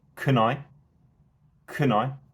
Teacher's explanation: for the next phrase can I does get unstressed